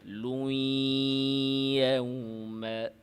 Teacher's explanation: লুই নাকে যাবে গুন্না